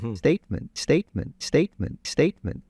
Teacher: It's very close to what I would say is a native. Just a little bit forward T.